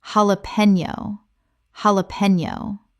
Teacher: The J makes an H sound in Spanish, and the Ñ makes a Ni sound.